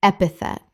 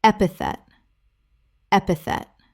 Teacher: Three syllables with the stress on the first.